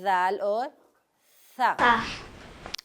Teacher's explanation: दाल, ता और दाल का एक मखरज है, और दाल और सा का एक मखरज है। दाल और सा जुबान की नोक जो है वो दांतों के किनारे से लगे